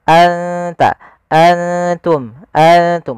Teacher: Ingat, perlu kita ingat kembali, ikhfa itu membaca antara izhar dan idgham. Maka di sini nunnya kita samarkan ke huruf ta langsung, seakan-akan kita melafalkan huruf ta.